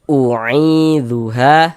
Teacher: Ada alif sebelumnya ada harakat fathah. Maka huruf yang memiliki harakat fathah dibaca panjang sehingganya ha dibaca panjang. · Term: Mad thobi'i